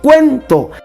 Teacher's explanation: en el cuento la mayor fuerza de voz está aquí en la e